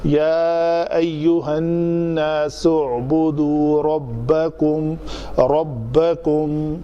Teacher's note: اس کا حمزہ وصلی ہے تو سین کے اوپر پیش کے ساتھ اس کو ملا کر پڑھا جائے گا